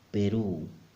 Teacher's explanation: the P sound again very similar to the English one but the Spanish one is softer somehow there is less air coming out